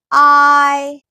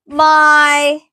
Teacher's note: ആ എന്ന സൗണ്ടിൽ നിന്നും ഇ എന്ന സൗണ്ടിലേക്കുള്ള ഒരു വഴുതിപ്പോക്ക്